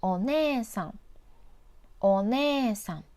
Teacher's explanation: This has the same vowel e next to each other, so extend the ne character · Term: long vowel